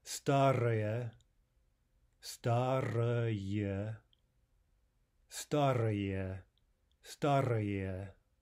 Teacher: the final ye does not reduce. We pronounce that fully as ye.